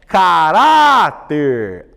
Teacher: A penúltima é a mais forte, é paroxítona, termina em R, portanto a sílaba tônica é acentuada, ó.